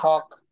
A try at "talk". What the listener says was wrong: chữ O dài á. Talk. Talk.